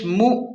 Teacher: حمزہ پر جزم ہے اس لیے یہاں واضح جھٹکا دیں